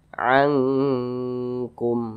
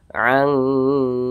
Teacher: Karena jauh. Jadi makharijul huruf nun dengan huruf kaf ini dia jauh. Nah, sehingganya dia ketika melafazkannya itu lebih condong berbunyi eng begitu. Jadi kadar dengungnya itu dia lebih tinggi. Angkum seperti itu. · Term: ikhfa hakiki